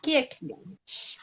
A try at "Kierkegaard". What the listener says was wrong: Kigar, Kigar. Não pronuncia o R e o D, Kigar.